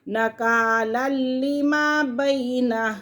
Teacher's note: تنوین کے فوراً بعد لام آ رہا ہے، لام یرملون میں سے ہے تو لام اور را کے اندر غنہ ہم نہیں کرتے